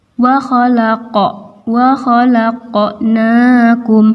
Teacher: na ini fathah berdiri panjang 2 harokat. Wa khalaqnakum zai mati, ini disebut sebagai hamas karena keluar angin ketika diucapkan. · qaf mati, maka ini qalqalah sugro dipantulkan. Wa khalaqnakum, na ini fathah berdiri panjang 2 harokat.